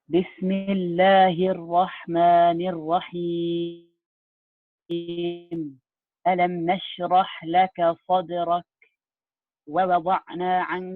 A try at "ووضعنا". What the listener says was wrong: ووضعنا. Give the ain, Habibi. Give the ain more time.